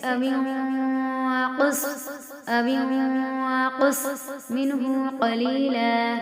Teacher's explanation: نون کی آواز کو ناک میں چھپا دیں گے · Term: اخفا